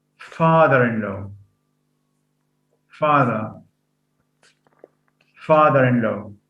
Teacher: Father-in-law, where stress, again, the primary stress falls on the first element.